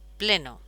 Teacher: la U se abre en O